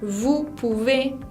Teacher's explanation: la palabra vous lleva una O y una U que se combina para producir el sonido U. La S final no se pronuncia.